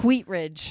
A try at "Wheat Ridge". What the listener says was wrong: too much. Wheat. Wheat Ridge. You put too much hack in it.